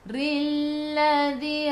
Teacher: ra baca dengan nipis, ra baris bawah